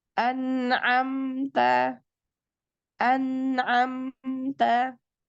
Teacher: Dia tetap ada gunnahnya walaupun durasinya tidak sepanjang yang berhukum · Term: naqisah